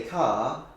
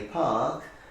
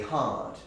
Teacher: speakers coming from England will not pronounce the R unless it's followed by a vowel